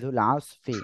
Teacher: আইনটা গলাটা চেপে পড়তে হবে